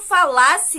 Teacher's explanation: a sílaba tônica, né, a sílaba pronunciada de maneira mais forte, é a sílaba Lá e não a sílaba Fá